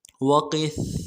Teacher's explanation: بقلها من بقلها وقثائها واو کو نرم سے ادا کریں گے، قاف کو سا کے ساتھ ملانا ہے، سا کے اوپر تشدید ہے، زور دیں گے